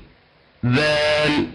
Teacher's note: الذال أيضا مثل الثاء يشترك فيه طرف اللسان مع أطراف الثنايا العليا